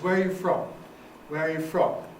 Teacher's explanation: fall on the nucleus from